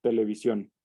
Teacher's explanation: Y esto lo que nos indica es dónde va colocada la sílaba tónica, porque a la hora de pronunciar televisión nos damos cuenta que es sion la sílaba tónica, porque es la que pronunciamos con una mayor intensidad